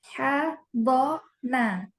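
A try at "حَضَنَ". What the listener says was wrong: Iya, dotnya diitbakan lagi. Hadona. Hadona.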